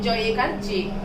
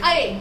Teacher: फिर ऐकार का उच्चारण ऐ, थोड़ा आवाज में खिंचाव की तरफ ऐकार